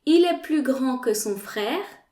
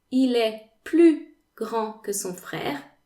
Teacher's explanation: The S in plus is silent because it is followed by an adjective, grand, that starts with a consonant, a G.